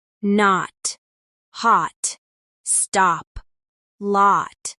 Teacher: The vowel is open and rounded almost like a but with a warmer quality.